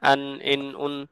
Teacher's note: জিহ্বার শীর্ষ থেকে একটু ভিতর অংশ সামনের উপরের দাঁতের মাড়িতে লেগে নুন উচ্চারিত হয়